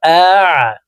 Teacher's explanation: আইন হরফকে হালুকের মধ্যখান থেকে চাপ দিয়ে উচ্চারণ করতে হবে